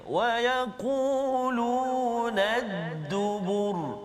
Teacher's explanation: Tapi kita matikan dia sebab kita waqaf dan kita tengok huruf sebelum dia huruf zal dan juga huruf ba, kedua-dua tu baris depan, maka bunyi ra tu bunyi tebal. Kita tafkhimkan bacaan kita pada huruf ra tersebut.